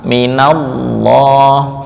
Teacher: lam yang dibaca tafhim pada lafzul jalalah apabila didahului oleh harakat fathah. Baik fathah itu asli ataupun aridi.